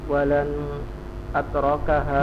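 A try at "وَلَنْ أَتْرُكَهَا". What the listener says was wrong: Walan ru, roknya di dhammah. Walan atrukaha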